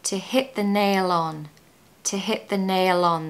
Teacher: make sure you pronounce the L on the end of nail because it will help you blend into the next word which is on